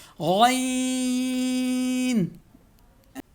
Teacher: غین خو کی طرح سیم ہے، جس طرح خو کا مخرج ہے ویسے غین کا مخرج، یعنی حلق کا جو منہ کی جانب والا جو حصہ ہے وہاں سے غین نکلے گی